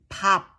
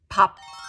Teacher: You close your lips like how you would pronounce b sound, but you do not release like bob. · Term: do not release the sound